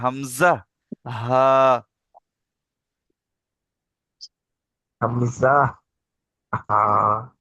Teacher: হালাকের বা কণ্ঠনালীর শুরু হতে উচ্চারিত হয়।